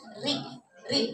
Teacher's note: Jadi kalau ro di kasrah itu tarqib tipis ya